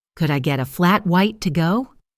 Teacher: Notice how could I often blends together to sound almost like a single word could die. The words get a linked and reduced sounding like geta. · The words get a linked and reduced sounding like geta. And the phrase to go is spoken with a clear downward intonation at the end signaling that the request is complete